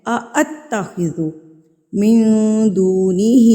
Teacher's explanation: یہ اتخذو نہیں ہے، اتخذو من دونہ، دو کو ہم کھینچیں گے کیونکہ یہ واؤ مدہ ہے